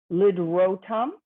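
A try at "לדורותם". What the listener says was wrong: Lidorotam, they're each separate. And so here, the reason it's read that way is because they're each its own consonant. Li, do, ro, tom.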